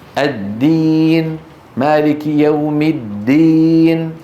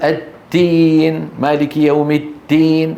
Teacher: الدال من الأخطاء فيها خلط صوتها بشيء من التاء